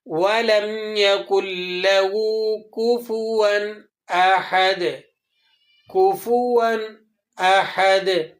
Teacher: اب یہاں کفوًا پر آپ کو 2 زبر کی تنوین لگی نظر آ رہی ہے، اور اس کے بعد حروف حلقی میں سے حمزہ آ رہا ہے۔ اب آپ نے یہاں غنہ نہیں کرنا بلکہ اظہار کرنا ہے۔